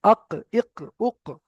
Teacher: কফ হচ্ছে জিভের গোড়া ওই সোজা উপরের তালু, জিভের গোড়া ওই সোজা উপরের তালু, আক, ইক, উক।